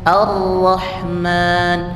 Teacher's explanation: Kalau ro itu pinggir-pinggirnya tidak ada tapi mengalirnya dari depan. Ar-Rahman, ada ujungnya itu keluar angin.